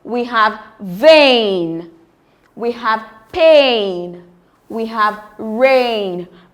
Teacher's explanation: It starts as a closed mid-front vowel and glides onto a front vowel E.